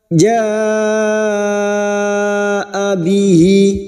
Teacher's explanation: mad wajib mutasil 5 harokat kita panjangkan.